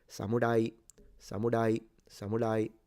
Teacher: But the intonation is from low to high. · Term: rising pitch